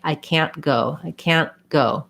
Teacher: stopped so it sounds like i can't go i can't go i lift my tongue up for the t i just keep my n sound short · What you might have noticed is I didn't say I can't go. That T ends up being stopped. So it sounds like I can't go, I can't go.